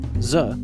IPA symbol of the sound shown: z